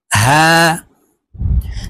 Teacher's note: ওয়াও। হা, হা হরফ হলকের শুরু থেকে উচ্চারণ হবে, এটি হলো ছোট হা।